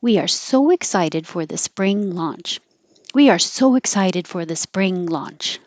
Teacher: You round your lips for so, and then excited is not rounded. So in that movement from so, keep your voice going, and then a W will just automatically happen.